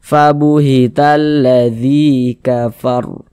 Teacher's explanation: Sebelum ya sukun ada harokat kasrah, maka huruf yang memiliki harokat kasrah ini dibaca panjang. Sehingganya zi dibaca panjang. Mad tabi'i panjang 2 harokat.